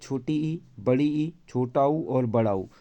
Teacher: संवृत की बात करेंगे तो इसके उच्चारण में मुख कम खुलता है।